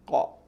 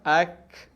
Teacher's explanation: Tapi dia tak, bila kita sebut dia tak kena dekat langit-langit atas tu. Kalau qaf sentuh langit-langit atas, kalau kaf tak sentuh. Dia akan ada renggang sikit. · Beza huruf qaf dengan huruf kaf ialah qaf sentuh langit-langit, kaf tak sentuh langit-langit. Qaf kita punya pangkal lidah sentuh langit-langit, kaf dia tak sentuh. Dia ada ruang sikit.